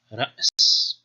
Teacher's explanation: you might know from Arabic that there's a Hamza sound in there